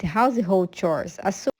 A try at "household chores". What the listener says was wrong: Household, household chores. So that's where it's a little bit rough with the linking there.